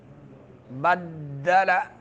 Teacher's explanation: دال میں شدد ہے اور شدیدہ حروف میں سے سختی کے ساتھ اس حرف کو ادا کرنا ہے